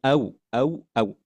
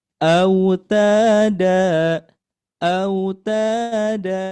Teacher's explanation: Ketika membacanya, waunya ini membentuk bulatan di bibir. Karena wau ini masuknya ke dalam ee makhrajnya asyafatain. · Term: harf lin